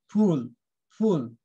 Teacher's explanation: ওকে একটু ছোট হবে, উপরের দিকে যাবে সাউন্ডটা